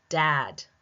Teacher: I feel the vibration in dad.